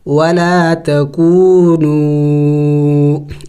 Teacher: کونوا دونوں واو مد ہے، اس کو تھوڑا سا زیادہ کھینچیں گے اس لیے کہ اس کے اوپر چھوٹا مد بھی ہے، ولا